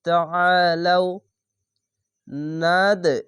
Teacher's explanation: এখানে কলকলা ধাক্কা মেরে নিচে সাউন্ড আসবে